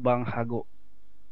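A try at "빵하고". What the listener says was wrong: Pang ya ini, bang ya, pang. ya, bukan bang.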